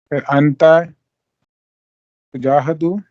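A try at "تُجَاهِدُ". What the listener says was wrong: Tujahidu. Don't change the harkas until this point.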